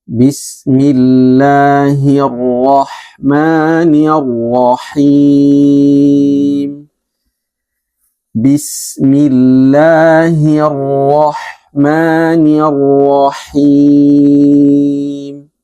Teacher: Nah, pada bismillahirrahmannya harus seimbang. Jangan ada yang melebihi daripada dua harakat. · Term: mad